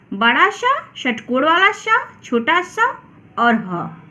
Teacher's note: ऊष्म व्यंजन संख्या में 4 होते हैं। इन व्यंजनों के उच्चारण में मुख से गर्म हवा निकलती है तथा इनका उच्चारण घर्षण से उत्पन्न होता है